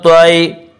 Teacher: یا لین کو نرم آواز کے ساتھ جلدی پڑھیں گے، تھوڑا بھی نہ کھینچیں